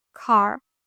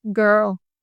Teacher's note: you have to stress on the R sound. Like you have to roll the R sound.